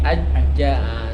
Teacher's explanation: Ketika tasydid dia suaranya terputus ya.